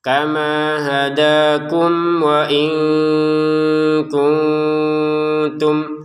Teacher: mim bertemu wawu dibaca dengan jelas